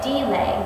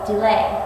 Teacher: You do not say delay, you say delay with the accent on the second syllable